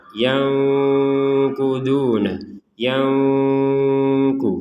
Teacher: Ada nun sukun di sini bertemu qaf, kita baca dengan samar. Yanquduna, yangku, jadi disamarkan, bukan dengung. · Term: ikhfa